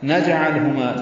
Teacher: جیم ساکن پہ قلقلہ ہے، لام ساکن پہ اظہار ہے